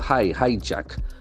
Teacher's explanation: The accent falls on the first syllable.